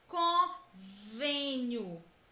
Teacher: mostra que a sílaba tônica deve ser pronunciada com o som fechado